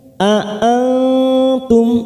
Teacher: nun sukun bertemu ta ikfa aqrab kita samarkan 3 ketuk. A'antum mim sukun bertemu ta idhar safawi kita baca jelas.